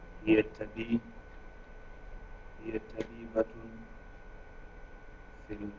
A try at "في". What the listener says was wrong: Not fil. Fi.